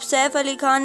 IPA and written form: ˈsɛːf əˈli xaːn (Saif Ali Khan)